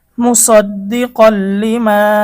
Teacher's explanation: আসে নুন সাকিন বা তানবিনের পরে গুন্না ছাড়া মিলিয়ে পড়তে হবে। এখানে তানভনের পরে লাম এসেছে এটা বেলা হরফ তাহলে গুন্না ছাড়া আমরা মিলিয়ে পড়ব।